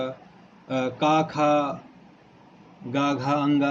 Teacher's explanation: का, खा, गा, घा, अंगा इनको हमने बताया कंठ से उच्चारित होते हैं।